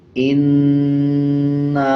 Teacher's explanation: حمزہ نون زیر ان، نون الف مد زبر نا، انا، الف کے اوپر چھوٹا مد ہے، اس کو 3 سیکنڈ کھینچ کے پڑھا جاتا ہے